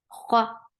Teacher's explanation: Kha is heavy. For fatha, open your jaws. The sound is short.